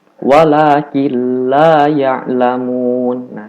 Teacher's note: dimasukkan cuman jangan sampai ada dengung di hidung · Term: idgham bilagunnah